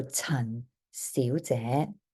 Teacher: Okay, Chun. And then you're going to be rising again for Xiu and rising again for Jie